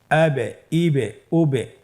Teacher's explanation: এই যে আমরা হরফের শেষের দিকে একটা সাউন্ড করছি, এটা একটা প্রতিধ্বনি হচ্ছে, একটা ডাবল সাউন্ড হচ্ছে, এটাই কলকলা। উচ্চারণের সময় একটু ধাক্কা দিয়ে উচ্চারণ করলেই কলকলা হয়ে যাবে ইনশাআল্লাহ।